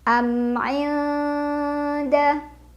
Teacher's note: Cara baca mim sukunnya jelas, tidak ditahan. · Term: idhar syafawi